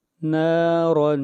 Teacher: را کے اوپر 2 زبریں آئی ہیں اور را کو موٹا پڑھیں گے